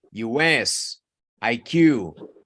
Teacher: Initials, siempre se enfatiza la última.